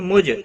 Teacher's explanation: جیم ساکن پر قلقلہ ہوگا